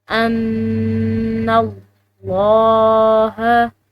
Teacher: مشدد نون پر غنہ کیا جاتا ہے اور لفظ اللہ کی لام موٹی ادا کی جائے گی کیونکہ پیچھے والے حرف یعنی کہ نون کی زبر ہے.